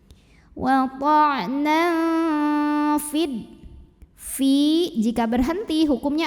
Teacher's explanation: Now ada ikhfa awsat, karena ada tanwin fathah bertemu dengan huruf fa. Maka tanwin fathah ini dibunyikan samar-samar. Ya, siap-siap menuju fa disertai bunyi dengungan. · Tapi di sini dibaca panjangnya hanya jika berhenti saja. Sedangkan kalau wasal atau meneruskan bacaan, fa-nya pendekan, fid langsung masuk ke dal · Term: takhalus bil hadfi